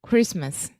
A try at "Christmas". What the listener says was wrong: Christmas is a totally silent. That's just the T does not exist there.